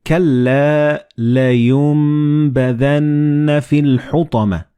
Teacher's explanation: Like in this example, you read كَلَّا لَيُنبَذَنَّ فِي الْحُطَمَةِ. So the noon and ba, they will be assimilated together and you will pronounce them as meme.